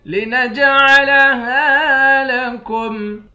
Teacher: نون کو جیم کے ساتھ ملا کر جیم پر قلقلہ کریں گے۔